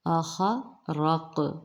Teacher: قاف پر جزم مستعلیہ، یہ موٹا حرف ہے، قاف پر قلقلہ کیا جائے گا۔ اخرق، قلقلہ کو نمایاں کر کے پھر آپ آگے بڑھیں گے۔